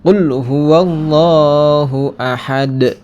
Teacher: sini ada juga bacaan ee huruf Qalqalah ya huruf Qalqalah Kubro Qalqalah Kubro karena huruf qalqalahnya ini di akhir kalimat nah dan juga di sini ada harakat hidup Ya makanya dibaca